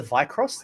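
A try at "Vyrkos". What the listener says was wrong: V-Cross. Yeah, it's VYR. The R's before the K.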